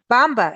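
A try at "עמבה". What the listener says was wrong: Not bamba. There is bamba and there is amba.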